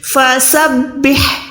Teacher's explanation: ہا جو ہے حلق کے درمیان سے. اس کے بعد یہاں پر دیکھیں با کو ڈائریکٹ سین ساکن کے ساتھ ملانا ہے.